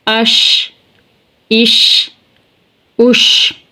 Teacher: شین شین شین کی آواز منہ میں پھیلتی ہے